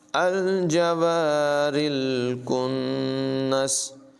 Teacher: نون مشدد میں غنہ ہوگا